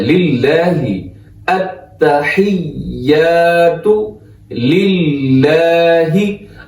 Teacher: آگے کیا ہے، लिल्लाहि, यहां पे इसको बारीक पढ़ना है, लिल्लाह, लिल्लाह मोटा नहीं करना इसको, क्योंकि यहां जो लफ्ज़ अल्लाह है उसमें लाम से पहले जेर है, तो लिल्लाहि बारीक पढ़ना है